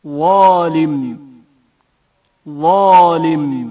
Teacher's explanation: زال کی آواز سے شدید تر تلفظ ہوتی ہے